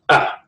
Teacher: A is the shortest vowel that we have. We sound it at the back of the throat.